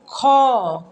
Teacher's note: ख बोलने पे ज़्यादा हवा प्रेशर बाहर आ रहा है, इसलिए महाप्राण हो गया